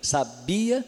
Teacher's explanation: tem o sabia, que não aparece o acento gráfico, mas a sílaba mais forte é o bi